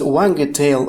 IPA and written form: ˈwæɡteɪl (wagtail)